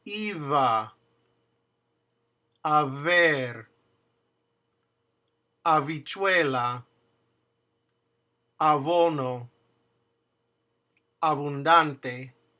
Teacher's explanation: it's pronounced very softly, and it's actually letting air go through your lips. So it's not a B and it's not a V, but it's a V, very softly, as if you're blowing air to blow out a candle, but putting a little bit of vibration there.